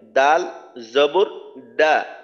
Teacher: দালের মাখরাজ হলো জিহ্বার আগা সামনের উপরে দুই দাঁতের গোড়ার সঙ্গে লাগাইয়া